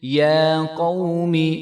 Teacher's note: وَإِذْ قَالَ مُوسَىٰ لِقَوْمِهِ یا قوم یا کے اوپر کھڑا زبر ہے تو اس کو ہم ایک الف کے برابر لمبا کریں گے